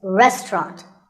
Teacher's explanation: in british english you might hear just two syllables · The second syllable is just ta, and the third is ront, so restaurant. In British English, you might hear just 2 syllables, restaurant.